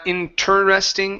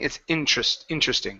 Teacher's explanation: Yeah, so it's not interesting, it's interesting, okay? So you don't pronounce the ter, it's tr